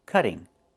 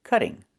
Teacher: Move the stress to the first syllable, cut.